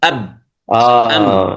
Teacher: هذا الميم والباء تخرج من ماذا؟ من الشفتين حال انطباقهما. إضافة إلى ذلك أن الميم فيها غنة كما تنظرون من الخيشوم، صوت الغنة أم.